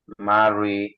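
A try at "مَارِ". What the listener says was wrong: রটা চিকন। মা ওই বললে মোটা হয়ে যায়। রয়ের নিচে জেড থাকলে রটা চিকন পাতলা।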